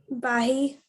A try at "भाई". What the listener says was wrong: Not बाई, भाई.